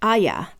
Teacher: in British English, Arya has 2 syllables since the R is silent and pronounced Aya